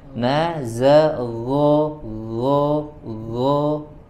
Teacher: huruf ghainnya lebih lembut, jadi huruf ghainnya tidak seperti huruf G ya.